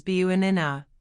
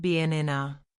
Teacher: Americans often say banana as buanina, not banana. The first syllable becomes a weak quick schwah. Uh, it's a soft, almost lazy sound and it's everywhere in American English.